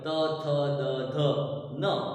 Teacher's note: આ બધા હંમેશા દાંતના જીભ સાથેના સ્પર્શ સાથે બોલાતા અક્ષરો છે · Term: દંત્ય